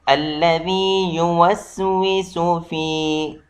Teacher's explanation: ذال کا نرمی سے آواز ہوتا ہے، نہ کہ زے جیسے آواز بالکل نہ نکالا جائے